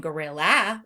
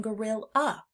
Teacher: we hear the schwa in the end of the word gorilla. We're not saying gorilla, we're saying gorilla.